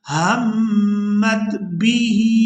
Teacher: यहाँ मीम मुशद्दद पर गुन्ना करेंगे, इसके बाद मीम को ता साकिन के साथ मिलाया जाएगा।